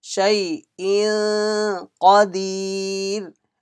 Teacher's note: there will be إخفاء read with nasal sound stretching one alif or two alif